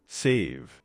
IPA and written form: seɪv (Save)